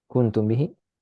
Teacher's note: Ya, bunyinya sama dengan iklab. Cara bacanya dengung 2 harokat dan kasih celah. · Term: ikhfa syafawi